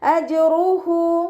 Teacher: ജീമ് കൽക്കല letter ആയതുകൊണ്ട് full സുക്കൂന് കൊടുക്കാൻ ശ്രദ്ധിക്കുക കേട്ടോ. അജ് എന്നുള്ള സൗണ്ട് കൊടുക്കുക കേട്ടോ. വ്യക്തമായി സുക്കൂനിനെ വ്യക്തമാക്കിയിട്ട് ഉച്ചരിക്കുക. · ഹൻ്റെ കൂടെ വാവ് സ്വഗീറയാണ് വന്നിട്ടുള്ളത്. 2 കൗണ്ട് നീട്ടാൻ ശ്രദ്ധിക്കണേ